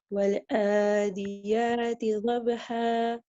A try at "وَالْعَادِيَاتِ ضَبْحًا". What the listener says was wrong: Pronounce the ain from the middle of your throat, a bit sharper than you did. والعاد, the makhraj of the ain is the middle of the throat and it has to have a sharp sound. والعاديات ضبحا.